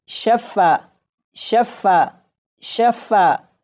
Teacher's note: جیسے یہاں پر آپ دیکھیں، یہاں پر فا کے اوپر تشدید ہے تو جب اسے پڑھیں گے تو فا کو 1 نہیں بلکہ 2 مرتبہ پڑھا جائے گا